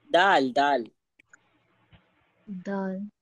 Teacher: जुबान की नोक को ऊपर के सामने के दो दांतों की जड़ में लगाने से दाल अदा होता है